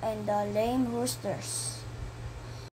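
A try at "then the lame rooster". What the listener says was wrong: The learner skipped the word then and proceeded with inserting an S at the end of the word rooster. He pronounced it as roosters.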